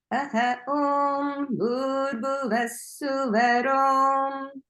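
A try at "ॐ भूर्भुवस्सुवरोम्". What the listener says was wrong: Just don't forget about the Mahapranas in Bhur and Bhuvas. Bhur, Bhuvas. Okay, so don't forget about Bhu and Bhuvas.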